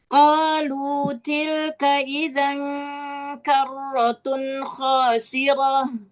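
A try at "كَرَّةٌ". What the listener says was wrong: Karrotun, bukan tunnya. Karrotun khasirah. Karrotun. Karrotun, bukan. Bukan juga karrotun, bukan. Karrotun. Biasa aja datar.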